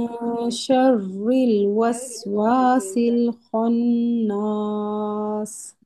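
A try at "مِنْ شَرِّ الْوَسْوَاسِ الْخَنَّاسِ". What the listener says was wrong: अच्छा रुके, मिन शर्रिल, ये रॉ का मखरज, हम लोग रॉ को पता नहीं कुछ रिल रिल कर रहे हैं, ठीक है। रिल, रिल, होंठ सीधे रखे, जबान भी सीधी रखे। आपके लाम हिल गए हैं सारे। शर्रिल वसवासिल खन्नास। आपके वाव पे होंठ भी नहीं गोल हो रहे, ठीक है। वस वसिल वस, वाव पे होंठ गोल।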